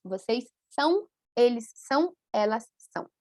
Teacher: Então, a nasalização leva um pouco para a letra U em todos esses casos.